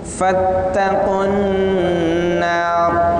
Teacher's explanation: Qu di sana ada tanda panjang tapi karena bertemu dengan huruf yang ditasydid maka tanda panjangnya tidak berguna. Fattaqun narallati ti panjang satu alif dua harokat.